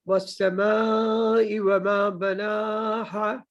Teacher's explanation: والسماء میں مد ہے نا میم کے ساتھ, تو اس کو 5 فنگرز تک لمبا کرنا ہے